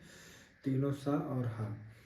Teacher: इनका जब उच्चारण करते हैं तीनों सा और हा का, तो हमारी जो प्राणवायु है, क्योंकि जब तीनों सा का उच्चारण करते हैं तो हमारी जिह्वा जो है यानी हमारा जो कंठ है वो संकीर्ण हो जाता है, जिसके कारण जो प्राणवायु निकलती है बहुत ही संघर्ष के साथ निकलती है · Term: ऊष्म